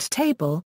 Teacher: some languages also allow other sounds to form the nucleus of a syllable such as the syllabic L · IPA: [ˈtʰeɪ.bl̩]